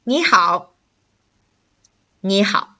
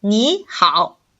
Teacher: You notice 你 and 好, they're both the third tone. So when the two third tones put together, you will have to change the first tone to the rising tone, or we call it the second tone.